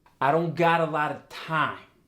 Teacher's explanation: you drop off the pitch a little bit